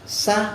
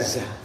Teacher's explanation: sa itu bunyinya mahmus, kalau za majhul